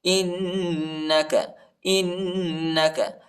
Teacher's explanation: حمزہ کو نون کے ساتھ ملائیں گے اور غنہ کریں گے